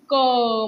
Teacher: त्याची तीव्रता उच्चार करताने जास्त आहे म्हणून त्याला कठोर व्यंजन म्हटल गेल आहे